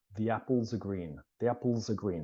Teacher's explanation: So you can quite clearly hear that the S is pronounced with R. It sounds like SAR.